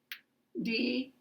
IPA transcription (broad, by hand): d